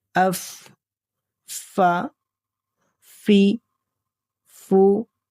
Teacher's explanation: حرف فا کا مخرج ہے ثنائے علیا کا کنارہ اور نیچے کے ہونٹ کی تری، یعنی اوپر کے سامنے والے دو دانتوں کا کنارہ اور نیچے کے ہونٹ کا اندرونی گیلا حصہ۔ جب آپ اپنے اوپر کے دو دانتوں کے کنارے کو نیچے والے ہونٹ کے اندرونی یعنی گیلے حصے پر نرمی سے ٹکائیں گے اور ہوا باہر نکالیں گے تو فا ادا ہوگا · فا کو ادا کرتے وقت دونوں ہونٹوں کو آپس میں بالکل نہیں ملانا، بلکہ صرف اوپر کے دانت اور نیچے کا ہونٹ ہی آپس میں ملیں گے